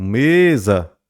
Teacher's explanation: Então, mesa, me seria ali a sílaba tônica. E mesa, a gente tem essa sílaba tônica, a penúltima. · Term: paroxítona